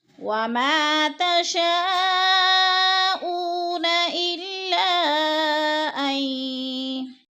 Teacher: اللہ پہ مد منفصل ہے، 4 الفی مد ہے، اس کو ہم نے 4 حرکات کے برابر کھینچ کر پڑھنا ہے. حروف مدہ کے بعد حمزہ دوسرے کلمے میں آ رہا ہے تو ادھر مد منفصل ہے.